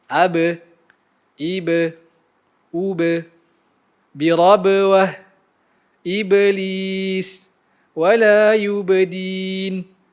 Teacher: Apabila ia berbaris sukun, ia akan menghasilkan lantunan bunyi atau lebih dikenali sebagai qalqalah.